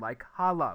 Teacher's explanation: the N disappears and it makes the sound like hala, which is assimilation